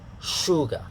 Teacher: the first sound is the sh sound here the sh sound is unvoiced the first part of the word show okay sugar not sugar